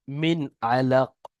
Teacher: মিন গুণনা হবে না, নুন সাকিনের পরে আইন এসছে হরফে হালকির মধ্যে। আর কফটা সেখানে সাকিন হয়ে যাবে।